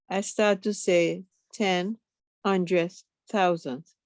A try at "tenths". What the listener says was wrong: not tens, tenths. It has the THS. tenths. It has the THS. That's right. decimal, you start putting the THS. Tenths, hundreds, thousands.